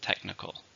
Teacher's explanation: How many syllables in technical? 3, stresses on the first syllable.